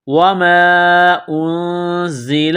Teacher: کے ساتھ ملانا ہے، نون ساکن کے بعد زا ہے تو نون ساکن پر غنہ کریں گے، آواز ناک میں چھپائیں گے، اس ناک میں آواز چھپانے کو اخفا کہتے ہیں ، زا میں سیٹی کی آواز پیدا کریں گے، دانتوں کو · زا میں سیٹی کی آواز پیدا کریں گے، دانتوں کو سختی سے ملائیں گے